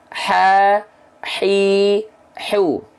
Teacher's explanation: Jadi ha kecil dilafalkan dia keluar dari bagian tengah tenggorokan, bagian katup epiglotis. Karena dia keluar dari sini, maka karakteristik sifat nafas yaitu hamsnya itu berubah menjadi berbisik. · Ha kecil dilafalkan dari tengah tenggorokan.